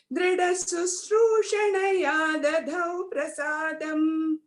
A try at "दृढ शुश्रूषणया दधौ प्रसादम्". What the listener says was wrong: The last line, Dridha Shu, not Su, Shada. Dridashu Shrushanaya.